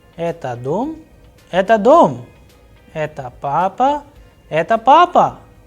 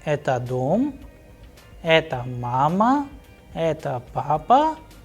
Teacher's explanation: the tone and texture in the interrogative will go higher at the end, whereas in affirmative it will fall